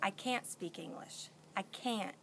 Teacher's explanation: can't with a t is really short it's like you chop it off almost and we when we speak English we don't put the T · really short it's like you chop it off almost and we when we speak English we don't put the T on the end